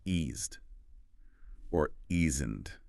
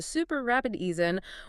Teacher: Because that T's of not is in an unstressed final position within the contraction, it often reduces to that familiar American flap D sound